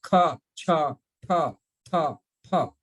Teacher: जब आप फा बोलती हैं तो हवा नीचे की तरफ नहीं आती, सीधा जाता है, क्योंकि वो लेबियल्स है